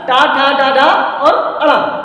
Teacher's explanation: इन वर्णों का उच्चारण हमारी मूर्धा के माध्यम से होता है। जिह्वा जब हमारी मूर्धा को स्पर्श करती है तभी इन वर्णों का उच्चारण होता है